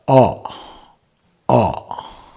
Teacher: Now you utter the shabda a from kantha.